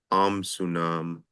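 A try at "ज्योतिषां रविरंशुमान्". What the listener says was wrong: Amshuman. Man. There's an M.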